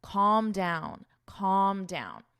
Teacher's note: there's no L in this word. It's not call with an L. No, it's calm, And notice the vowel even. It's an ah